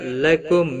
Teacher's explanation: لکم میم ساکن کے بعد حمزہ آیا ہے، اظہار ہوگا، گناہ نہیں کریں گے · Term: اظہار شفی